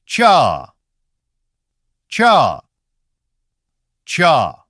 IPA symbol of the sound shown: tʃa